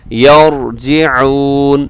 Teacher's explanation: یرجعون میں را پر پڑھا جائے گا، مفخم موٹا تازہ کر کے ہم اس کو پڑھیں گے